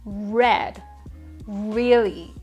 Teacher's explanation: English speakers tend to curl the tongue a bit too much so they end up making a hard R sound with rounded lips like in English red really